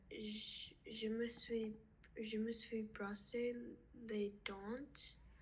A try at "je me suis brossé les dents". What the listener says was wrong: Alors, je me suis brossé les dents. On ne prononce pas le T.